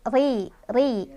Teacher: Ro-nya dibaca secara tarqiq atau tipis ya, karena barisnya ada di bawah, jadi ri. Fi nari jahan di sini ada gunnah musyaddadah karena ada nun yang bertasydid.